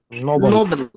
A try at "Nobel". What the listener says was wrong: Second syllable. Nobel. It is Nobel. Nobel. This is Nobel, Alfred Nobel. It is always Nobel. Second syllable is stressed.